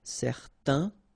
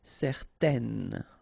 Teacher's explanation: Okay, so in that case, certain, it's quite interesting because you've got this A-I-N together, and then they will produce this un sound. Okay, so it's nasal in your nose, un. Okay, if you add this at the end, then it will change the thing, and then you will pronounce it n.